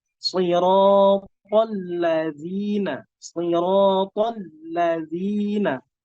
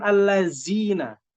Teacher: zalnya dikeluarkan lidahnya dari dua gigi seri, di antara dua gigi seri.